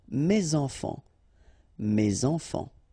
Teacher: So in that case, my children, so it should be at the plural because this children is at the plural, okay, so it goes like that, and then ending with s. Enfant, children is starting with a vowel, so you should make the liaison